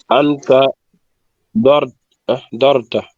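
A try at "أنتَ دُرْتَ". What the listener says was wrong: Anta. La première lettre doit être toujours avec ou. Anta, Durta.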